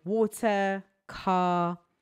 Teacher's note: we're not really pronouncing an R sound, like we're not rolling the R